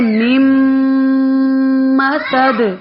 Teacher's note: آگے میم کو میم میں مدغم کریں، میم مسد. اب میم مسد دال پر پھر قلقلہ ہو رہا ہے کیونکہ ہم وقف کر رہے ہیں تو تنوین کسرہ جو ہے وہ ساکنہ میں چینج ہو جاتی ہے.